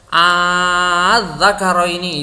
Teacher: Ya, jadi dari adz-dzakaroini ini a ditambah adz-dzakaroini itu hamzah yang kedua dijadikan alif, sehingga hamzah berharokat fathah bertemu dengan alif itu menjadi dibaca panjang. Adz-dzakaroini itu berarti hamzah yang kedua itu diibdal atau diganti ke huruf alif dan dibaca panjang.